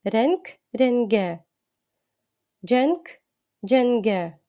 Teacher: літера к буде перетворюватися не на йомушак г а на звичайну дзвінку г